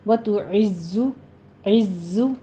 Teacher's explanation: عین ہے، عین کی وجہ سے آپ نے پیچھے تا کو موٹا نہیں کر دینا. وتعز، عز، زائے کی آواز قوی رکھنی ہے، زائے کے اوپر سیٹی کی آواز بھی ہوگی، اور اوپر آپ نے ضمہ ادا کرتے ہوئے ہونٹوں کو گول کر لینا ہے.